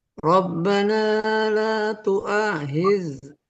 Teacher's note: Khidna diseret. Rokhwa itu diseret keluar.